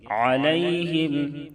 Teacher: یا ساکن سے پہلے زبر ہے، یا لین ہوگی، اس کو نرم آواز کے ساتھ معروف پڑھیں گے